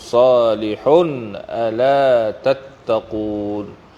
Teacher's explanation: Izhar halqi, dizahirkan sebutan tanwin tanpa dengung